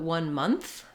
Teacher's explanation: I do very clearly have to make my th sound, tongue between my teeth.